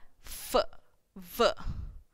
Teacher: labiodental, so lip and teeth are involved